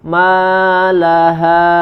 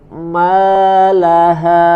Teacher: pada bacaan Mad pada huruf Ma Tidak boleh masuk ke hidung maaha coba [Musik] lagi harus terasa perpindahan eh makhrajnya dari hidung